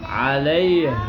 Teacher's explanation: عین کی اوریجنل آواز گلے کے درمیان سے